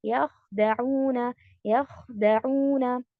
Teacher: ख जब आप कहते हैं तो आपकी डीपेस्ट पार्ट ऊपर तालू पे लगेगी, सॉफ्ट पैलेट पे। तो यहाँ पर हमारा वॉइस जो है वो मोटा होगा, हैवी हो जाएगा, ठीक है।